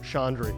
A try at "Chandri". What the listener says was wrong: Everyone assumes there's an N in my name. I don't know why.